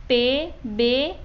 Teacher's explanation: इसमें दोनों होठों से जो है हवा को रोका जाता है। मसलन जो जो लफ्ज़ जिन लफ्ज़ों का तलफ़ुज़ किया जाता है वो पे, बे वगैरह की आवाज़ों को बनाते हैं जब दोनों होंठ हवा को रोकते हैं। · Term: लबी